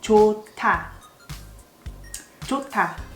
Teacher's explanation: H is silent, but H and D together becomes T sound.